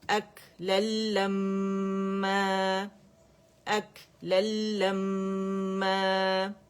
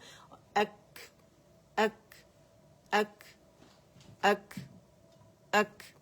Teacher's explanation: کاف میں جو ہمس ہے وہ ہم نے واضح کرنا ہے, ٹھیک ہے. ہوا آنی چاہیے لیکن ہم نے تھروٹ پہ نہیں جانا.